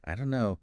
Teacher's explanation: the don't and no just merge